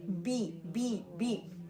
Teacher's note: زو زو, round your lips, bring your lips out and do the دما sound and then سے. بے نہیں پڑھنا, بی پڑھنا ہے, لائٹ